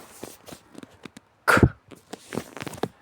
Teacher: lifting the back of the tongue to touch the soft palate, that is a velum, completely obstructing the airstream and then quickly releasing the tongue to allow a burst of air to escape.